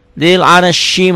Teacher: Ya. Zil ar ro-nya dibaca tebal karena sebelum ro mati baris di atas